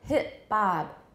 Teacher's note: the t becomes a glottal stop that itself is not assimilation but we often say hip bob